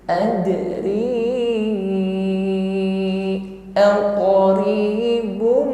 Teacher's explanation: ri kita panjangkan 2 alif, 4 harakat atau ukuran panjangnya 2 kali ayun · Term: mad jaiz munfasil